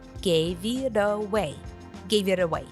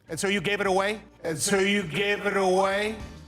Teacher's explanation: The T sound stands between the two vowels and is turned into a D sound. And the V from give is linked to the next word. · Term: connected speech